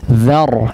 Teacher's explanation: ra-nya menebal tapi za-nya tetap ditahan untuk tipis